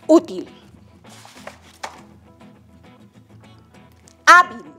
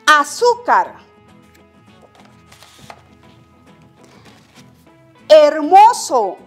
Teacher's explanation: la mayor fuerza de voz recae en la penúltima sílaba, o sea, la segunda sílaba. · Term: palabras graves